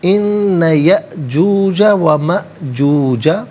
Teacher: یا اور ما میں آپ دیکھیں حمزہ ساکن ہے, جھٹکے کے ساتھ پڑھا جائے گا